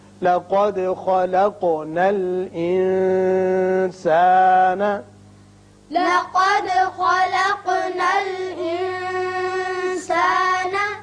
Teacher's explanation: یہاں نون پر اخفا ہوگا اس لیے کہ سین حروف اخفا میں سے ہے